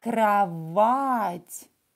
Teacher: O is stressed. O will be pronounced as A here.